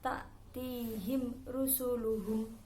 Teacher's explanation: Mim sukun bertemu selain ba dan mim dinamakan idhar safawi, tidak boleh dibaca dengung.